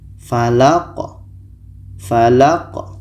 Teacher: Ki ini pendek maka dimatikan karena di akhir.